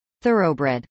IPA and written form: ˈθɝoʊbrˈɛd (thoroughbred)